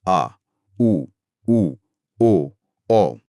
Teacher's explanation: पश्च स्वर। जहां जीभ का पिछला हिस्सा गले की तरफ थोड़ा सा उठता है।